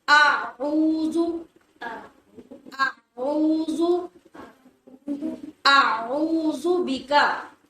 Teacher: اس کو حمزہ اور عین کو علیحدہ علیحدہ اپنے مخرج سے ادا کریں گے، دونوں کو اکٹھا نہیں کرنا۔